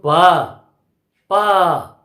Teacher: अब व्यंजन को देख लीजिए, अगर हम पी को लेंगे, पा को लेंगे, तो पा इसका उच्चारण करने में क्या करना पड़ रहा है? मुंह से निकलने वाली हवा को हम ओठ से रोकते हैं, तब पा का उच्चारण करते हैं